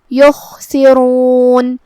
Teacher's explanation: خا کی ادائیگی حلق کے اوپر والے حصے سے ہے تو ہمیں خا کو وہیں سے پڑھنا ہے اور اسے بھاری آواز میں کیونکہ وہ حروف التفخیم میں سے ہے. را کا بھی حکم ہے تفخیم کیونکہ اس پہ پیش ہو تو ہم را کو بھاری آواز میں پڑھیں گے. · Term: حرف الخا